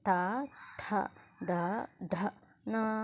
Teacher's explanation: Next ట థ ద ద న ఇవి వచ్చేసి దంత్యాలు మనం దంతముల సహాయంతో వీటిని పలుకుతున్నాం కాబట్టి వీటిని దంత్యాలు అంటారు.